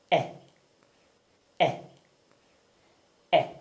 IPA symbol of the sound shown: e